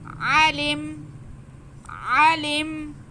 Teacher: لام کے نیچے زیر اور میم ساکن، لام کا زیر ہم میم کے ساتھ ملا لیں گے